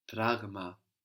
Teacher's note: So there we have the G from the throat, like in εγώ.